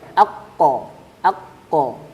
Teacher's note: huruf qaf keluar dari pangkal lidah bertemu langit-langit lunak bagian belakang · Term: makhraj huruf qaf